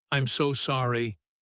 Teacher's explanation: really let that so stretch out, soft and warm, like a small wave of sympathy.